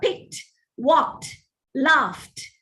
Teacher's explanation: You don't say picked, the D sound. The final sound in these words where the ED inflection is used, it is pronounced as T